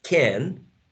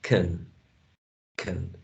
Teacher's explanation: strong form can with a trap and a weak form can